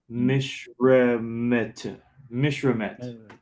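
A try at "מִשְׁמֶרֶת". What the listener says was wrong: You're mixing up a couple of letters there when you finalize the mish. Yeah, mishmeh. It's a soft T, which is sort of like a TH.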